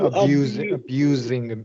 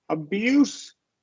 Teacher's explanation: verb gets the z sound noun gets the s